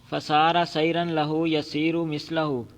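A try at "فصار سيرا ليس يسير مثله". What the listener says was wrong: فسار سیرن، ہاں جی، آپ لیسا چھوڑ رہے تھے، وہ ایسا چلا اس جیسا پہلے نہیں چلا.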